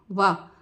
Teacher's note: वा बोलते समय दंत और ओष्ठ का प्रयोग होता है। दांत और होठ मिलाएंगे आप, दांत को होठ से टच करेंगे, वाह, तो वो वाला वाह है ये, वाह।